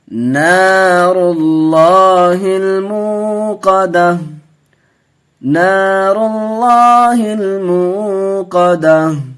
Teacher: ناظرین، اللہ کے لام سے پہلے زبر پیش ہو تو پر ہوتا ہے، زیر ہو تو باریک ہوتا ہے، تو یہاں پیش ہے، اللہ کے لام سے پہلے پر کر کے پڑھیں گے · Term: اللہ کا لام